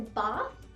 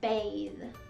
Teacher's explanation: when there's a th at the end of a word normally it's an unvoiced sound like a bath but when we have a silent e on the end it changes to a voiced sound like bathe